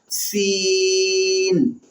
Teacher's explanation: زبان کو گھسیٹ کر بالکل باریک کر کے، شیٹی کی آواز نہ آئے